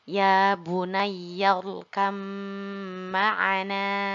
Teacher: di sini langsung kita baca pada huruf mim, ba-nya kita leburkan. Ya bunayyal kam ma'ana. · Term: idgham